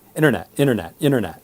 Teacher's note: when they say I'm surfing the internet that all of the T's in the word are not pronounced